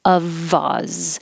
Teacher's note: I changed the F to a V to remind you that it looks like an F, but it sounds like a V, and we will connect it to the O after it. Of Oz. And Oz is really spelled with a Z.